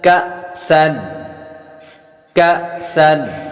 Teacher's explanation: حمزہ ساکنہ کو جھٹکا دے کر پڑھتے ہیں